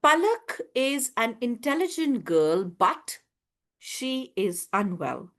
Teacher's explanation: My tone goes up then there is a but then it comes down. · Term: rising falling tone